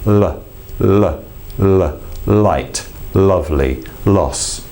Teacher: the tongue tip goes to the top of the mouth and then just drops